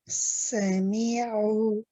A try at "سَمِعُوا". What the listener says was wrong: Remember how we said open the mouth a little bit? Don't smile so much. Sami'u.